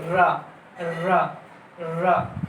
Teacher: लुंठित व्यंजन में जीभ जैसे बार बार आगे पीछे जाती है इनको बोलने में